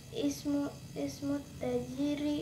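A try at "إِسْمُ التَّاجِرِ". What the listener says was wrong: Taknya panjangin.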